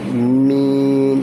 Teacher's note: মিম উচ্চারণ হবে দুই ঠোঁটের শুকনো অংশ থেকে